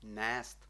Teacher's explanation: ми мали коротке е тепер маємо довге е · філологічна наука каже що цей звук по відношенню до простого е довший на 1,75